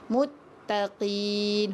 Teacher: Huruf qaf ni betul-betul dekat tekak kita tu.